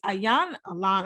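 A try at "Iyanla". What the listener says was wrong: You don't pronounce the I, it's Yanla.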